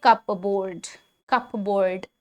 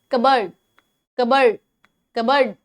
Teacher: It may have the word cup in it, but the P is generally silent.